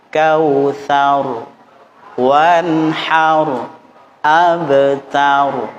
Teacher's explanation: diupayakan tidak lebih dari 2 getaran, ya, tidak lebih 2 getaran. Atau kalau bisa diupayakan 1 getaran. Kautsar, wanhar, abtar, satu getaran.